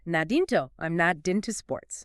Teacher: The unvoiced T in not sits between two vowels, so in North American English, it softens into what we call an alveolar tap. Right, which sounds almost like a quick D.